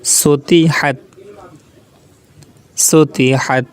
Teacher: হা কণ্ঠস্বরের মাঝখান থেকে উচ্চারণ হবে।